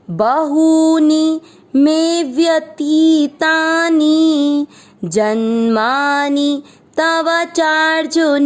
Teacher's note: जैसे ही मात्रा बड़ी हो रही है हम उसको थोड़ा खींच रहे हैं, और जब मात्रा छोटी है तो उसको नॉर्मल बोल रहे हैं